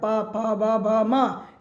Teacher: पू अर्थात पवर्ग, प फ ब भ म, इसका भी उच्चारण ओष्ठ से होता है